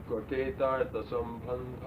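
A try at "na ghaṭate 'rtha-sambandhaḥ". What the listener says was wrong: Artha separated. Therefore, na ghate tatha sambandha. It's pronounced. Na ghate tatha sambandha. Like that. Ta should be long. Ta. Na ghate tatha sambandha.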